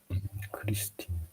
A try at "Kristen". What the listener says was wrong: Kristen. Kristen. Remember, it's S sound, not E.